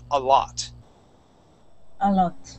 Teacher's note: Make sure when you're pronouncing that word that O makes an ah sound.